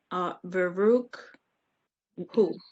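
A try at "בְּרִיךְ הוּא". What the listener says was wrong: There's a one dot is a E. The E. There's no U there. It's an E. So Barihu.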